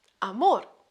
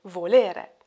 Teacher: notice how the final word of every verse has lost its final vowel